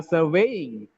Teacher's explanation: surveying second syllable stress